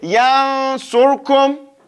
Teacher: we have a nun sakina going next to a sad in one word. So that is the rule of ikhfa. It's between the idhar and the idgham.